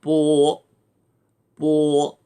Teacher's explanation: 이 오자는 영어의 오자처럼 씁니다만 입모양은 오 할 때처럼 만들어 놓고 소리는 어 할 때처럼 내는 겁니다